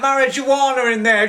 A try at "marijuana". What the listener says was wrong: It's marijuana, not marijuana. You pronounce the J as a Y.